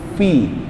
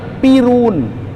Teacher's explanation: Ada hembusan dulu yang keluar. Kalau nggak ada keluar, jadinya pirun.